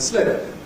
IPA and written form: slɪp (slip)